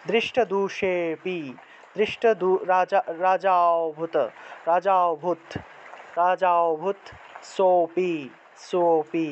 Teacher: উচ্চারণ অর্থাৎ এই যে দেখতেছো না বড় বর্গীয় জ্য দন্তস্য অর্থাৎ এই লুপ্ত অ এর আগের যে অক্ষরটা থাকবে সেটাকে একটু টান দিয়ে একটু দীর্ঘরূপে উচ্চারণ করতে হবে